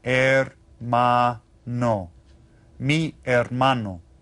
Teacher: you notice that the H is silent when we read that. We just read it hermano.